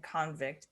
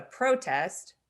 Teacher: whether they're a noun or a verb but they're pronounced differently there's a verbal emphasis on a different syllable which indicates whether or not it's a noun or a verb